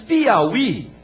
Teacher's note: É um i tônico depois do ditongo, mas permanece o acento.